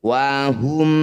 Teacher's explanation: Bacalah bunyi mim dengan jelas dengan menutup bibir Anda. Tidak perlu bersenandung. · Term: izhar syafawi